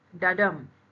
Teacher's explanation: It is a 2-beat combination, an unstressed syllable followed by a stressed syllable, and which makes a sound like dadam pattern, like a heartbeat, like a 2-beat combination. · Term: iamb